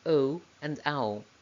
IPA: eɪ,aɪ,ɔɪ,əʊ,aʊ